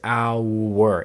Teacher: it's a triphthong. It's our. It's 3 different movements of that vowel